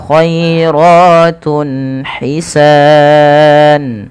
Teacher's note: lembutkan dalam pelafalan huruf ya-nya yang dimana didahului dengan fathah karena dia ada bacaan lin